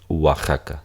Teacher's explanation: Algo interesante es que si tenemos, normalmente pensamos nosotros en las vocales débiles como en la I y la U, pero la O, de hecho, aunque ortográficamente la escribamos O y ortográficamente dividamos la sílaba como O, A, Ja, Ka, en realidad se pronuncia Wa, como si fuese una U deslizada